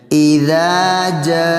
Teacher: اذا جاء، حمزہ باری، دال کی آواز، دال کو ایک الف کے برابر کھینچنے۔ اذا جاء، جیم پر 5 الف مد